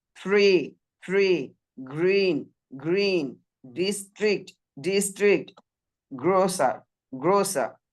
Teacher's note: ট্রি এর পরে ই vowel sound আছে, এখানে পুরো আর এর উচ্চারণ হবে